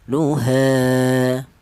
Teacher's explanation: ini dibaca matobi'i ya, panjangnya dua harokat atau dua ketukan.